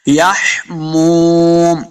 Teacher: واو مدہ ہے، اس کو دو حرکات لمع کریں گے، آخر پہ جب وقف کریں گے تو میم کو ساکن کرنا ہے، وظل من یحموم، می پڑھیں گے۔